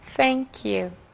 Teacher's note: Lembrem do TH, produz um S, coloca a língua no meio dos dentes